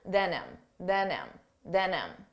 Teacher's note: notice how you don't hear the H on him